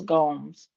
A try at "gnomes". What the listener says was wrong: Gomes? The G is silent.